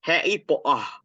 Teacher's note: Harry Potter with a silent R and a silent T